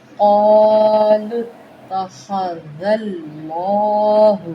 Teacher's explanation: لام کو موٹا کریں گے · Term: جلالہ پر